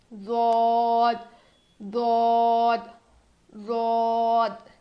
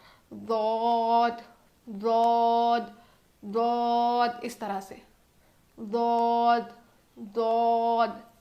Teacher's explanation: दौद दौद दौद, इस तरह से दौद दौद, ठीक है। ज़ुबान की करवट को ऊपर के दाढ़ों को लगाने से दौद अदा होता है, और दौद को हम मोटा पढ़ेंगे, और इसका मखरज किसी भी हर्फ से नहीं मिलता।